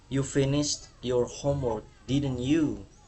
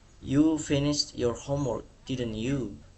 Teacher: itu nadanya akan naik di akhir kalimat atau rising intonation.